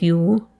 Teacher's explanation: no goose fronting there at all